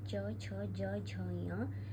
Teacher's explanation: जिनका उच्चारण स्थान तालू है